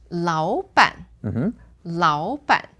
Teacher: So notice that the first word becomes second tone and the second word stays the third tone.